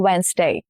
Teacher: Over time, the middle consonants got swallowed up in fast speech, and that is why we lost D, the sound of D.